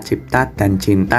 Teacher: bunyi TT pada kata cita berubah menjadi bunyi PT pada kata cipta dan menjadi NT pada kata cinta, atau biasa disebut dengan disimilasi diakronis.